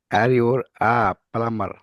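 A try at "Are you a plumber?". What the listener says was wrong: The ইউর না ইউ, আর ইউ আ প্লামার? আর ইউ আ প্লামার? না আর ইউ আ প্লামার? প্লামার প্লামার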